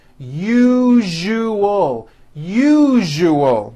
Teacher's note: syllable zuu the one with the underline needs to be voiced put your hand on your throat and feel for the vibration in the second syllable